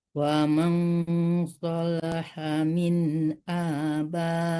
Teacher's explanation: ikhfa hakiki, jadi disamakan ke sod, jangan terlalu menekankan nun